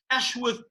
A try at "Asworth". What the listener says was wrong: Well, it's actually Asworth. Yeah, it's Asworth, not Ashworth, but a lot of people say Ashworth.